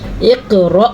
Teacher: اب جب حمزہ ہم پڑھتے ہیں تو اس کی آواز سینے سے نکلتی ہے، حلق کے آخری حصے سے، لیکن جب اس کو پروناؤن کر کے پڑھا جاتا ہے تو اس کی آواز اور ہوتی ہے، جیسے نب، منہ سے پھر اس کی آواز نکلتی ہے۔